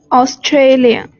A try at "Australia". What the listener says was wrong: So what you're saying sounds like Australian. So no, 我刚刚说的是不对的，那是不对的。 发音。你两次都说听上去 Australian， 那不对，因为 Australian 就是澳大利亚人，那个国家的名字就是 Australia。那